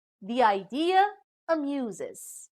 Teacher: a plus juncture is placed between the adjoining vowels e from the word the and i from idea